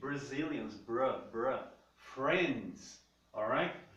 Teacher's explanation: quando você tem o R expressamente escrito na palavra, ele vai ter o som de R caipira